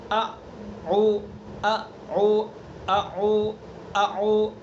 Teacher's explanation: طرف سے، سینے کی طرف سے ادا کریں گے، حلق سے، حلق کا جو سینے کی طرف والا حصہ ہے وہاں سے حمزہ کو ادا کریں گے